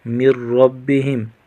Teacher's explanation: من ربہم میم کو را کے ساتھ ملا کر پڑھیں گے۔ نون ساکن کا غنہ نہیں ہوگا، میم ساکن کا بھی غنہ نہیں ہوگا